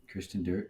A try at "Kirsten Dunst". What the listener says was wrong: You said that way wrong. You added R's where there should not be R's.